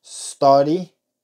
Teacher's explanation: observen que no estamos poniendo una e al principio